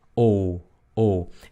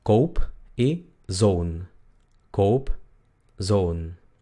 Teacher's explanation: Es como la O del español, pero un poquito más redondeada. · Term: la O larga